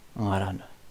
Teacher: So the whole word is nasalized. Angaran. Like nothing blocking this. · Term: rampant nasalization